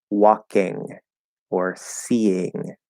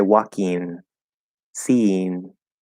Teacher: Where the way that I say it and the way that it seems many Westerners say it, we don't say ing, we say een. So we change it to e, and we change to n in the front, and we say walking, seeing.